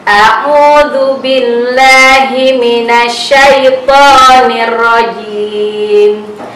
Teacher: Ada beberapa huruf mad di dalam ta'awudz tadi. Jadi kadar panjangnya adalah 1 ayunan.